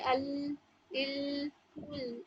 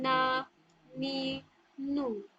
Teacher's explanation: लाम में जितना आपका front part of the tongue फैल रहा है उतना नून में नहीं फैल रहा